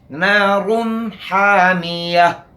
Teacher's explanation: حامیہ، ہا کو وسط حلق سے ادا کرنا ہے، حامیہ. پھر آخر میں تا مدورہ ہے، اس کو ہا سے بدل دیں گے